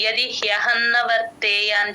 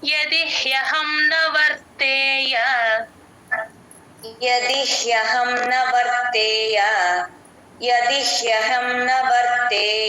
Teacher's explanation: హ కింద య వత్తు ఉంది కాబట్టి సంయుక్తాక్షరం కాబట్టి ది కి జాయిన్ చేసి చెప్పాలి ఆ య క్లియర్ గా వినిపించాలి